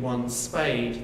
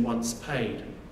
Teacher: the S sound is longer in once spayed than it is in once paid